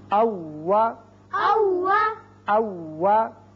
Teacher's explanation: جب آپ واو ادا کرتے ہیں تو اس وقت ہونٹوں کو گول کیا کیجئے. اوپر والے دانت نیچے والے ہونٹ سے نہ لگیں، بلکہ او وا ہونٹ آگے کی طرف گلائی کے ساتھ آپ بڑھائیں گے.